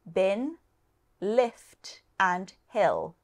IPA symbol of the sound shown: ɪ